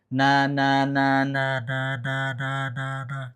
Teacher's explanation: Ketika dipencet suaranya berubah. Berarti ada udara yang keluar mengalir lewat hidung. Itu disebut gunnah.